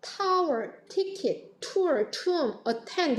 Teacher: 다 aspiration, 기식음이 나타납니다. 숨소리가 좀 크게 들어가죠. 강한 소리예요. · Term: aspirated T